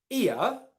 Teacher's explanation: it's the e sound as in it and then the uh schwa sound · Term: ear diphthong